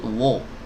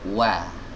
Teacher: Nah, perhatikan, monyong dulu huruf wawu ini, karena makhrajnya kan, makhrajnya ada di depan ya, dhammus syafataini dhamma gitu kan, dengan memonyongkan bibir dengan sempurna. Namun ketika kita berpindah dari wawu ke fathah, maka monyongnya jangan ikut wo, enggak, tapi wa. Kita membuka sebagaimana ba. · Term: wawu berharokat fathah